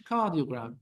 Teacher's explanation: Or electrocardiogram, like the British, cardiogram. The R disappears. There is no R.